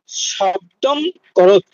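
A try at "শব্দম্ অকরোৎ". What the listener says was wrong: শব্দম করত বলে কোনো শব্দ নেই, শব্দ করত, শব্দম অকরত, ওই মটা ভেঙে ময় হলন হয় আর একটা অকার আসে, অ আসে।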